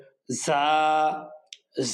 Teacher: জিহ্বার আগা সামনে নিচের দুই দাঁতের আগার দিকে লাগিয়ে এক আলিফ টেনে পড়তে হবে